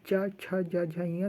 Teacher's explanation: ऐसे चा छा जा झा इयाँ, तो जीभ जाके तालु पे सटती है